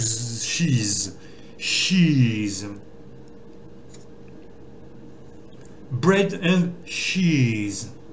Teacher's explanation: Mais vous entendez bien que j'allonge le i. Les deux vont se prononcer i, mais un i allongé.